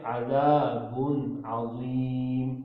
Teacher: بالکل منہ سے ہی پڑھا جائے اور دو پیش کو بالکل صاف پڑھنا ہے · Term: اظہار